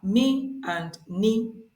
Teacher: consonants these are two in number they are me and N these sounds are produced with air flow passing through the nose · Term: nassal